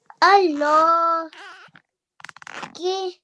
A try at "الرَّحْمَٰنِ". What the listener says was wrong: There is a lam here, but because it's a blank lam, we wouldn't read it. We would just join the alif with the ra. Ar-ra.